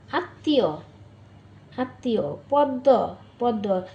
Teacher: শব্দের মধ্যে ম ফলা থাকলে সেই বর্ণ উচ্চারণে দ্বিত্ব হয় এবং সামান্য অনুনাসিক হয়। যেমন আত্মীয় আত্মীয়, পদ্ম পদ্ম।